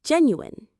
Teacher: Jen, u it has three syllables. Jen, u the stress is right at the start